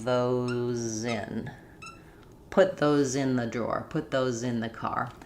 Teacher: if I'm saying put those in or those are, then I'm really going to hear that Z more as a strong Z again.